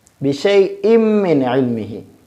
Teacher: بشیء من علمہ پڑھیں گے، بشیء من علمہ نہیں پڑھیں گے، اس دو تنوین کو میم میں ملائیں گے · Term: مدغم